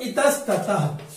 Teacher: विसर्ग के बाद त है तो विसर्ग दंती स में